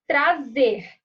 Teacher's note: eu sei que a sílaba tônica é o Z, porque eu pronuncio com mais força